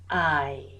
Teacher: starting with a, and then going forwards, gliding into I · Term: diphthongs